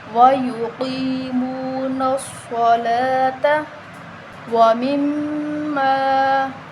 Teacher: صاد جو ہے وہ صاد کی اپنی آواز آنی چاہیے، صاد کو سین نہیں کرنا